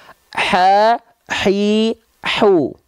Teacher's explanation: kalau H kecil dia ada hembusan angin ya dengan karakteristik yang yang berbisik